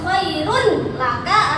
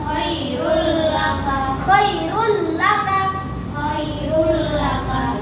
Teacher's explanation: Cara membacanya dimasukkan tanpa dengung.